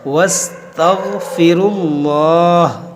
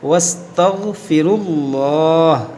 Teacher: اس میں جلالت اللہ عز و جل کے لام کو موٹا کریں گے، کیونکہ اس لام سے پہلے پیش ہے، زبر یا پیش ہو تو اس کو موٹا کیا جاتا ہے، واستغفروا اللہ، اس طرح سے۔